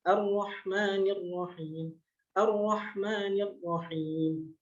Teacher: takrir, yaitu pengucapan huruf yang disertai dengan bergetarnya ujung lidah. Jadi takrir itu adalah getaran pada ujung sisi lidah yang hanya dimiliki oleh sifat ro.